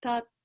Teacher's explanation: tongue between the teeth. It's not an English T.